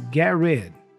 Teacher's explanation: And then he goes, get rid, the T for get disappears. It's kind of a stop T again.